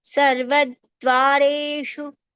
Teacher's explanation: Shu is a murdhanya or retroflex sound